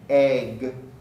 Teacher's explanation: the word egg egg ends with a voiced stop so the f of egg is lengthened egg not egg egg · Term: vowel lengthening